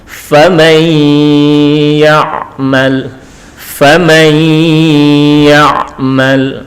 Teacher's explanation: nun ini dimasukkan atau dileburkan ke ya disertai dengan dengung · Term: idgham bi ghunnah